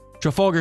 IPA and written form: ˌtrəˈfælɡər (Trafalgar)